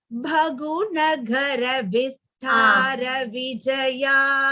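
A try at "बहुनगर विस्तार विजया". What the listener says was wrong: There is no Mahaprana there, Bhagini. It is Bahunagara Vistara Vijaya.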